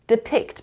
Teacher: 2 syllables and the stress is on the second syllable.